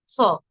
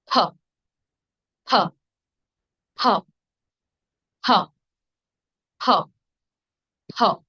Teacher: যখন ভুল উচ্চারণে ফ বলেন তখন ফ, দেখুন ঠোঁট ফাঁকা থাকে, দুই পাশ থেকে বাতাস বের হয়ে যায় ভ্যাম্পায়ারের মতো। যখন সঠিক উচ্চারণ করবেন ঠোঁট একসঙ্গে লেগে থাকবে, একসাথে ঠাস করে ছেড়ে দেবেন। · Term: ভয়ের উচ্চারণ